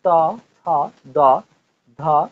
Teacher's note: এদের উচ্চারণ স্থান হচ্ছে দন্ত, দাঁত চেপেও তুমি এদের উচ্চারণ করতে পারবে, ওই জন্য এদেরকে বলা হয় দন্তান্ন বর্ণ বা দন্ত বর্ণ।